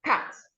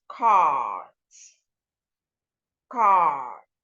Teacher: Now, when you come to words that have the letter R after any of the vowel sounds, the letter R makes that vowel sound a long sound